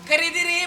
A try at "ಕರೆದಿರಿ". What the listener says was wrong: ಅಲ್ಲ ಈ ಕೆರೆಯುವುದು ಹೇಗೆ ಶಕಿ ಅಲ್ಲ ಜೋರ ಕೆರೆಯುವುದಲ್ಲ ಕರೆದಿರಿ ಅಂತ ಹೇಳು